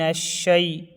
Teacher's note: شین پر تشدید ہے، تشدید والا حرف 2 بار پڑھا جاتا ہے۔